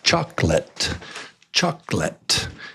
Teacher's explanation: they say chocolate just with two. They leave out the O completely. · But do you know people in the United States, they say chocolate, just with 2. They leave out the O completely. The O. So it's just chocolate, chocolate.